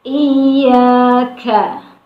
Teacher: ada huruf kaf yang harus tetap dibaca hamas